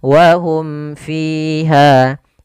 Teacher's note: gunahnya Ah di sini kembali salah penulisan bukan Ikhfa Syafawi tapi izhar syafawi jelas suara mimnya dan tidak boleh ditahan wahum fiha ya tidak boleh saktah juga misal wahum fiha enggak